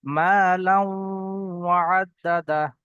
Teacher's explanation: তো এখানে তানবিনের পরে ওয়াও এসছে, ওয়াওটাকে এই তানবিনের সঙ্গে মিলিয়ে গুণনা করে পড়তে হবে। তাহলে এখানে ওয়াও গুণনা হবে কেমন ভাবে, লাম ওয়াও দুজাবর লাউ, মা লাউ, লাউ, এরকম ঠোঁটটা একটু গোল হয়ে যাবে।